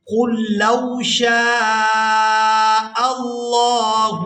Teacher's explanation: قاف کو پورا ادا کرتے ہوئے لام مشدد کے ساتھ ملائیں گے، لام ساکن کو یہاں پر چھوڑ دیا جائے گا